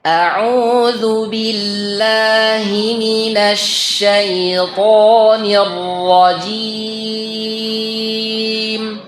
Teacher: karena di sini fathah maka tidak boleh dimonyongkan bibirnya begitu juga huruf Ro Jadi jangan sampai minasyaitir nah jangan dimonyongkan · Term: huruf tho